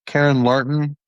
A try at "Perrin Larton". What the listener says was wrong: Perrin with a P.